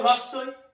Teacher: মুখটা আমরা বন্ধ করে উচ্চারণ করছি তাই এটার নাম সংবৃত